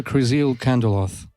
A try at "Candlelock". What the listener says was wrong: Candlelock. With a CK at the end. candle lock.